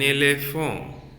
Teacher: totally I have removed T while I pronounce elephant